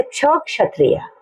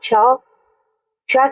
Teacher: जहां हम क के लिए बोलते हैं पहले वहां टकराती है फिर श जहां से बोलते हैं वहां पर आके टकराती है यानी क जो है हमारा गले में तालू के पास में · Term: संयुक्त व्यंजन